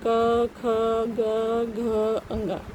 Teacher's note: आप चाहे तो बोल के देखिए, कंठ से आवाज आती है, क ख ग घ अंग, सीधे सीधे कंठ से आती है।